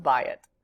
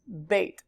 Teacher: You usually see it in the word pair form, which looks like this, bait. The AYI diphthong reduces, when it's in a word pair, to a tzere yod